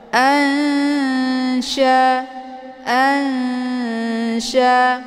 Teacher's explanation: jauh jadi Nun posisinya ujung lidah sementara S posisinya Tengah lidah cara bacanya nunnya disamarkan kemudian siap-siap mau masuk ke huruf Sya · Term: Ikfa ausat, ikhfa awsat